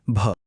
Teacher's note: हवा जोराने बाहेर फेकली जाते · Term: महाप्राण